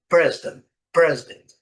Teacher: Muitas vezes, o restante da palavra a gente quase nem ouve falar